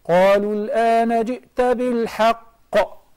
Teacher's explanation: So this is the most powerful qalqala, if the qalqala letter is mushaddad.